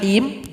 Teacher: juga ha yang keluar dari tengahtenggorokan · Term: ha tipis